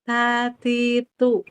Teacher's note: Tidak qalqalah karena dia juga hames